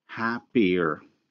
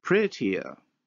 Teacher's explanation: adjective happy in the comparative form where we say happier and look at the glide that is inserted to separate the two vowels same thing happens in the world pretty where you have prettier